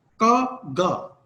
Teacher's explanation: अगर आप कहने का गा, ये बिल्कुल आपकी टंग व्हीलर बिल्कुल बैक ऑफ जो माउथ है वहां टकराती है और का और गा साउंड्स जो है इसमें पैदा होती है। ये स्टॉप्स हैं, व्हीलर स्टॉप्स हैं, बिल्कुल हवा एक दफा रोकी जाती है और फिर प्लोसिव्स पैदा किया जाता है का और गा के अंदर।